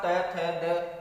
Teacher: महसूस कर सकते हैं आप त थ द बोल करके कि जीभ जाकर के दांतों के अंदरूनी हिस्से से टकराती है, तब इनका उच्चारण होता है। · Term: दंते वर्ण